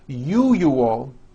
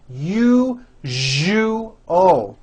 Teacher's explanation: syllable jus the one with the underline needs to be voiced put your hand on your throat and feel for the vibration in the second syllable